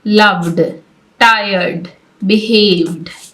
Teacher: तो फिर ED sound ऐसे प्रोनाउंस होगी जैसे हम डी को प्रोनाउंस करते हैं। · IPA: /d/